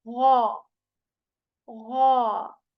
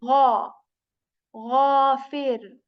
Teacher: So you make a very prominent sound of gargling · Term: ghoin